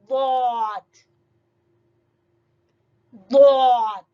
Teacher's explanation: زبان کی کروٹ، زبان کی سائڈ جب اوپر والی داڑوں کی جڑوں سے لگے تو ادا ہوگا ضاد